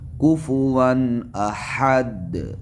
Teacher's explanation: کفوان واو کے اوپر تنوین ہے اور تنوین کے بعد حروف حلقیہ میں سے حمزہ ہے، لہٰذا یہاں اظہار ہوگا، تنوین کا اظہار ہوگا